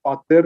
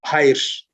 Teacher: The first one is pa becoming ha in Armenian in word initial position.